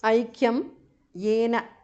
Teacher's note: anuswara changes to the nasal of ya